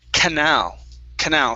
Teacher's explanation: canal canal stress on the end